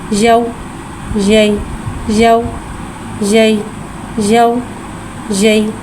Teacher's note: या साकिन है, या साकिन से पहले ज़बर आ रहा है, यालीन हो रहा है, लिहाजा यालीन को बगैर खींचे बगैर झटका दिए नरमी से मारूफ पढ़ेंगे।